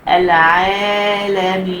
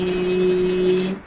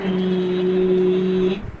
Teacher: نقف على المد العارض للسكون بحركتين أو 4 أو 6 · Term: مد عارض للسكون